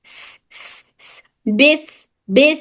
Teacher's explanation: ये सफीरिया भी है सीटी की आवाज · سین میں صفت حمز, اور یہ صفیریا بھی ہے, سیٹی کی آواز